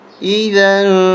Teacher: یہاں پر اخفا ہوگا، ناک میں آواز چھپا کے پڑھیں گے